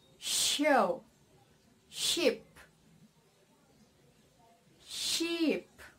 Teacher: placing the tongue blade close to the hard palate behind the alveolar Ridge